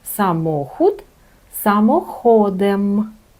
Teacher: Тобто при відмінюванні, якщо додається склад, правило позиції наголосу не змінюється. Наголос все одно падає на другий склад від кінця слова.